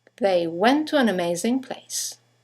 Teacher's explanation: two words one ending with a t the next one starting with a t they run into each other · you have the semi-vowel W that connects the vowels to and an to each other.